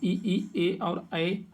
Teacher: जिन स्वरों के उच्चारण में जीभ का अगला भाग ऊपर नीचे उठता है अग्रस्वर कहे जाते हैं।